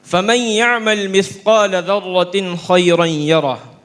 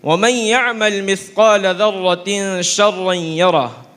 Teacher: یہاں تنوین کے بعد شین ہونے کی وجہ سے ایک الف کے بقدر غنہ ہوتا ہے